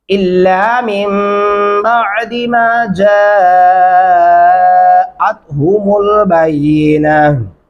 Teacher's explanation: جیم کے اوپر 4 الفی مدہ ہے، اس لیے ہم اس کو 4 الف کے برابر تک لمبا کرتے رہیں گے